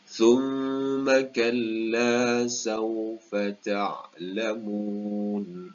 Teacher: Wajibul gunnah, perlu dibaca dua harakat dengan bacaan dengung. Kalla, hukum mad asli dekat sini perlu dibaca dengan dua harakat. Dan di akhirnya ada mad arid lil sukun, perlu dibaca dengan hukum mad panjang juga ya.